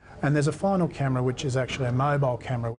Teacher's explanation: This is linking type 1, vowel plus y plus vowel. Actually ends in an e vowel sound, and the next word begins with a schwa sound. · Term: y linking